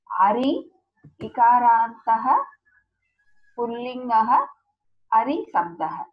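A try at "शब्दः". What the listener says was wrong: Ari Shabdaha, not Sabdaha. Shabdaha. This is Ari is different from Hari. That is, Hari is Lord Vishnu, this Ari is enemy. When you say it wrongly, the meaning is different. Hari, Ari. Both are different.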